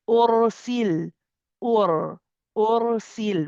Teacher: If the ra has a sukoon, but this time there is a dhamma before it, then again the ra is heavy.